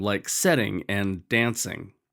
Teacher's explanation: If you don't do that, you'll end up with words that don't actually rhyme, like setting and dancing. Those words don't rhyme because the last accented syllable is set, not ing.